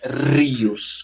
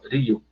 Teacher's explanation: Não é rios, com tanta vibração da ponta da língua perto dos dentes, não. É uma vibraçãozinha só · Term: R mais brando